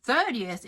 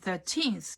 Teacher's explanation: 30th has an accent on the first vowel third ER and 13th is on the second vowel teens e